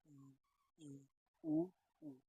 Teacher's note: संवृत वर्ण ऐसे वर्ण होते हैं जिनका उच्चारण करते समय हमारा मुख की आकृति बहुत कम ओपन होती है।